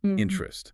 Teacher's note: If you can drop that middle vowel sound, that e sound